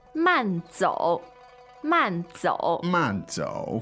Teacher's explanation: man man fourth tone means slow slow